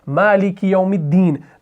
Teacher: تو میم کو ہم دال سے ملاتے ہیں